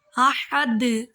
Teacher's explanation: ہا حلق سے آواز نکالیں گے ہا کی